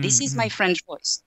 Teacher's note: If I was using my French voice, my pitch would be much lower.